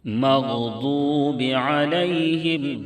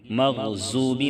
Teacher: ضاد کی ادائیگی میں زا کی طرح سیٹی جیسی آواز نہیں نکلے گی، مغضوبی نہیں پڑھیں گے، مغضوب علیہم ولا الضالین۔